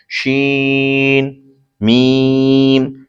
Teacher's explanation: शीन जबान के दरमियान तालु के दरमियान से अदा होता है, और मीम दोनों होठों के खुश्क हिस्से से अदा होता है।